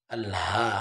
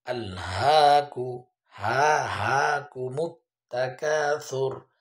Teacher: হার উচ্চারণটা হলকের শুরু হইতে হামজা হা।